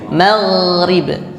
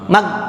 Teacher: Ghain itu juga jangan disamakan dengan mengucap G. Kalau G langsung terhenti. Ya, jadi alirkan bunyinya.